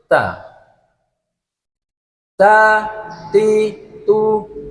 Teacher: punggung ujung lidah mengenai pangkal gigi seri pertama atas · Contohnya untuk ta, ti, tu, bat, dan ta itu sendiri mempunyai sifatnya, itu mempunyai sifat hamas yang memang ada suara desis sedikit, tapi tidak boleh dikeraskan sehingga akan menjadi suara huruf sin